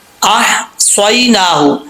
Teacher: یہاں پہ ہا جو ہے وہ باریک ہے، اس ہا کا تعلق حلق سے ہے، سینے کی طرف نہیں ہے